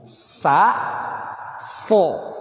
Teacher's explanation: So ini tebal, nanti ngaruh sama kasroh. Kalau sa tipis, sa, si, su. Tapi kalau so tebal, so, si.